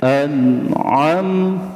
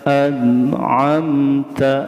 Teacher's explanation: Jadi si ain ini bukan huruf al-khaisum, tetapi huruf apa? Huruf halak di tengah tenggorokan.